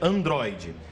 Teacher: uma palavra paroxítona ou seja uma palavra em que a penúltima sílaba é a sílaba forte é a tônica